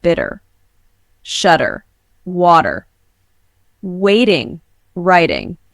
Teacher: in American English, it may either be pronounced like D when the T occurs between two vowel sounds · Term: T as D